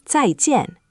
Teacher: Fourth tone on "zài" and fourth tone on jian. So, two falling tones one after the other. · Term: 2 falling tones